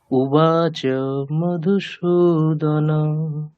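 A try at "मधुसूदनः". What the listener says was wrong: বিসর্গের উচ্চারণ মিস করলে হবে না, মধুসূদনঃ।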